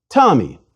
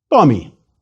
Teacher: if I say for example the name Tommy I put a puff of air after the T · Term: aspirated